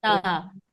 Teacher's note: जबान की नोक को आप सामने के दो दांतों की जड़ में टच करिए और ता अदा करिए, है ना। ता अदा हो गया। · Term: ता का मखरज